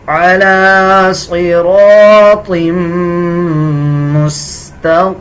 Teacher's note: آگے دیکھیں، میم پہ شد ہے، غنہ کریں گے۔ جب وقف کریں گے تو دونوں زیر کو سکپ کر دیا جائے گا اور میم کی آواز آدھی نکالی جائے گی